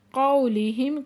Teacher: قو پہ واولین ہے نرمی سے پڑھیں گے